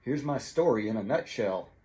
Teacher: the word nut the syllable nut is uh also strong